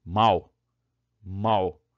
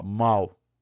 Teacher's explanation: Esse U só fecha, né? Ele parece que sai no finalzinho ali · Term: semivogal